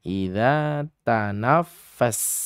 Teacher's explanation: sin-nya dibaca tipis saja atau istifal dengan kondisi lidah turun ke bawah